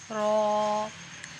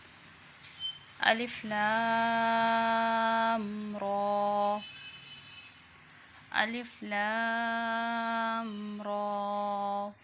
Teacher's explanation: را پر کھڑی زبر ہے، را کو 1 سیکنڈ کے لیے لمبا کرنا ہے